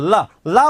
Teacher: जीवा के आसपास या अगल बगल से हवा निकलती है इसलिए ल को पार्श्विक कहा जाता है